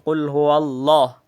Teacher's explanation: In bismillah manipis, in kul huwallah marakmul.